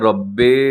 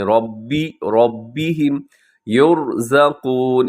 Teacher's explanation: با کو مجہول ہونے سے بچائیے گا، ربے نہیں پڑھنا اپنے، ربهم یرزقون.